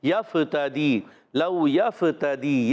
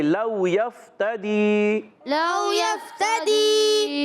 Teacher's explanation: لو میں واو ساکن سے پہلے زبر آ رہا ہے، واولین ہوگا، نرمی سے ادا کریں گے۔ یفتدی، یا کو فا سے ملانا ہے، فا کو ساکن رکھنا ہے، فا ہلانا نہیں، بعض بچے ہلا دیتے ہیں، یفتدی، لو یفتدی، یہ غلط ہے، پڑھنا ہے لو یفتدی، لو یفتدی۔